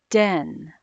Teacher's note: the airflow stops when the tongue makes contact with the alveolar Ridge